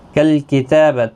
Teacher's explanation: تا کے اوپر کھڑی زبر ہے، ایک الف کی مقدار کے برابر کھینچ کر پڑھیں گے